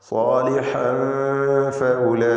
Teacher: തൻവീൻ ശേഷം ഫ. ഇവിടെ ഇഖ്ഫാ ഹഖീഖിയാണ്, വ്യക്തമാക്കി മണിക്കണം.